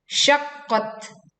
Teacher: kita mewakafkan tak sukun sehingga angin terdengar berhembus tetapi tidak berlebihan